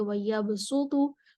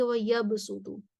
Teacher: وَيَبْسُطُ صاد کے ساتھ، باقی تمام قرآ سین کے ساتھ پڑھیں گے